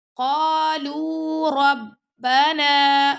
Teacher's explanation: قالو، اب لام کے اوپر دمہ یعنی پیش آ گیا تب بھی آپ نے اپنے لپس کو گول کرنا ہے۔ قالو ربنا، را کے اوپر فتح آ گیا یعنی زبر آ گیا تو ہم نے اس کو موٹا پڑھنا ہے